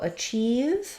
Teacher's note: achieve has second syllable stress. The achieve part is long.